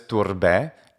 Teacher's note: E for AE is definitely a late Imperial Roman as well as a medieval pronunciation of AE. It's also standard in the Italian ecclesiastical pronunciation of Latin.